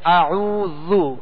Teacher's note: اعوذ باللہ اور بسم اللہ، جسے تعوذ اور تسمیہ کہتے ہیں، یہ ان کی بھی جو بتائی گئی تھی احتیاطی کہ اعوذ، اب زال ہے تو زال کو نرمی سے پڑھیں گے، اور اس کا پیش ہے تو اس کو دراز نہیں کریں گے